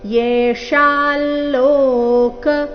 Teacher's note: ಅನುಸ್ವಾರದ ಉಚ್ಚಾರಣೆ ನಾಸಿಕಾ ಲ ರೀತಿ